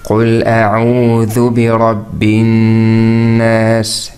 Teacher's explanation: We said the Noon with Shadda needs Ghunna.